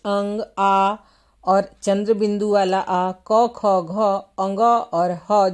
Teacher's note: क ख घ अंग और ह जो स्वर व्यंजन है इनका उच्चारण कंठ से होता है